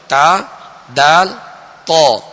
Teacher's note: جیسے تا اور تو، تا اور تو مخارج کی اب لسٹ میں آئیں گے تو تا، دال، تو ان کا ایک ہی مخرج ہے، اور وہ یہ ہے زبان کی نوک اوپر کے دانتوں کی جڑ. زبان کی یہ نوک اوپر کے جو 2 دانت ہیں سامنے والے، ان کی جڑ اندر کی طرف جو اس کی جڑ ہے یہ اس سے ادا ہوتے ہیں، یعنی ان کا ایک ہی مخرج ہے، تا دال تو۔